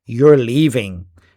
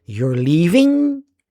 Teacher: Rising intonation at the end of the sentence, it turns it into a question.